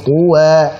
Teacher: Tebalkan ta-nya, wa tipiskan.